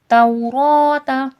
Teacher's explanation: توراۃ تو دیکھیں لین کا قاعدہ ہے، واو ساکن سے پہلے زبر ہے. توراۃ را موٹا کر کے پڑھا جائے گا، پر کر کے پڑھا جائے گا.